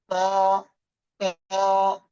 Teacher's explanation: জিহ্বার আগে উপরে দুই দাঁতের গোড়ায় লাগান, লাগিয়ে একটু মোটা আওয়াজে উচ্চারণ করতে হবে।